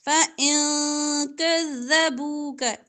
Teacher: إن کا نون ساکن کے بعد قاف اخفا